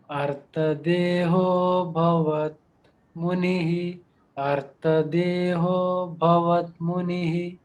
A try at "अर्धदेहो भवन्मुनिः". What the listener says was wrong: भवत मुनिः नहीं है, भवन मुनिः। संधि करेक्ट है, निकालने के बाद अभवत होगा, पर भवन मुनिः।